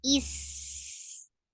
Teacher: Is a light letter. It will get sifa of rakhawa, and it will get sifa of safir, and safir is a whistle sound. Is this whistle sound should be there.